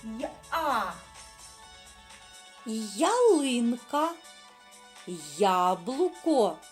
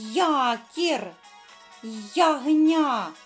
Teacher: коли буква я стоїть на початку слова то ми з вами чуємо звуки сполучення й а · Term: звукосполучення й а